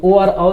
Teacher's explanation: ओ और औ जो है एक कंठ और ओष्ठ दोनों के सहायता से उच्चारित होता है, इसलिए इसको हम लोग कंठोष्ठ्य वर्ण कहते हैं।